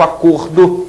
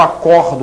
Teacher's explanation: o substantivo acordo tem um som fechado, o verbo acordo que tem um som aberto, portanto a pronúncia é diferente, mas eles se escrevem da mesma maneira.